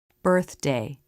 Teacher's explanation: watch the tongue tip come in and flip up for the D this is a quick move of the tongue that you can · how the lips are starting to flare for the r as the tongue comes through the teeth for the unvoiced th